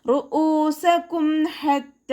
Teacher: ഹ എന്നുള്ള അക്ഷരത്തിൻ്റെ സൗണ്ടിനെ തൊണ്ടയുടെ മധ്യഭാഗത്ത് തന്നെ കൊണ്ടുവരിക കേട്ടോ. അക്സൽ ഹൽക്കിൽ നിന്നും പുറപ്പെടുന്ന ഹ എന്നുള്ള അക്ഷരം ഉണ്ടല്ലോ, അതിൻ്റെ സൗണ്ട് കൊടുക്കരുത്.